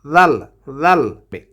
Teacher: জালটাকে জিব্বার আগা থেকে উচ্চারণ করতে হবে 2 দাঁতের আগার সঙ্গে লাগাইয়ে।